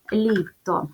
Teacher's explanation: звук ль став м'яким тому що після букви Л стоїть буква і яка пом'якшує попередній приголосний звук